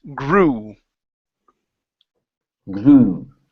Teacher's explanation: and you're not closing your mouth towards the very end so when you get to the end of that vowel it's grew and your lips close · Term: u sound